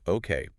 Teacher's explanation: okay with a bright falling tone maybe a bit louder. That sounds enthusiastic like yes let's do it or sounds great.